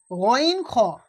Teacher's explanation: গইন খয়ের মাখরাজ একই জায়গা, একই, সেটা হলো কি? হালাক বা কণ্ঠনালীর শেষ ভাগ হইতে উচ্চারণ হয়